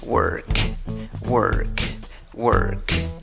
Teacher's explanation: Aunque se escribe con una O, la pronunciación no es con una O, es con una schwa, con aquella vocal que no es ni A, ni E, ni O.